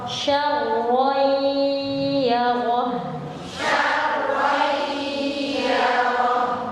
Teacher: karena idgham gunna dia tingkatan dengungannya paling tinggi